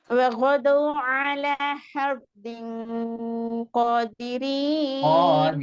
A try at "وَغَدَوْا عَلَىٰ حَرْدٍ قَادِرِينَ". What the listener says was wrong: இல்ல இல்ல அந்த காஃபை நீட்டுங்க அந்த காஃபை நீட்டு தான் நம்மளோட பிரச்சனை காஃபை நீட்டுருங்க